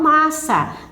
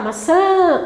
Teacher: você falar né que vai sair o som além da boca além do ar que sai pela boca também passa pelo nariz · essa palavra, ela tem que ser pronunciada com A nasal